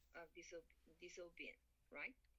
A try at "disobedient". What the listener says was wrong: Disobedient. Yeah, it's a little bit longer.